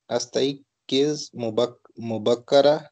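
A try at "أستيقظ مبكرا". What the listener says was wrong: इस तई पहले में अलिफ के साथ कसरा मुबक्किरन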